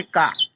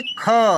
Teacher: महाप्राण मतलब क्या होता है कि श्वास पर अधिक बल लगता है।